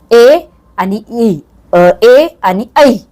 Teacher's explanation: कंठातून पण होतो उच्चार आणि टाळूतून पण होतो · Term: कंठतालव्य